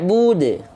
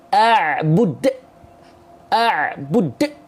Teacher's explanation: hilangkan hamzahnya dan kita lafalkan pantulannya dengan mengalir